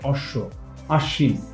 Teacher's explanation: শব্দের মধ্যে বা শেষে ব ফলা যেটা থাকে সেটা কিন্তু আমাদের অনুচ্চারিত থাকে কিন্তু আশ্রয়ী যে ব্যঞ্জনটা থাকে সেটা হচ্ছে দুইবার উচ্চারণ হয়